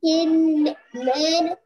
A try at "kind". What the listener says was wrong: kind he बेटा listen. किंड में आय sound कहाँ से आएगा? किंड बोलोगे तो फिर ई साउंड हो जाएगा. आपको आय साउंड बोलना है यहाँ पे. काइंड होगा.